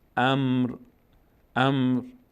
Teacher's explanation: امر ر اینجا ساکن میشه. امر فقط یک باریکه از صدای ر بعد از میم ساکن شنیده میشه